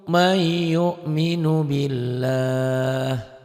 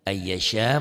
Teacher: Lafaz Allahnya dibaca tipis karena sebelum lafaz Allah baris di bawah. May nun mati ketemu ya idgham bigunah.